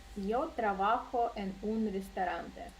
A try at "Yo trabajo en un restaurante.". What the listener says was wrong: Perfecto.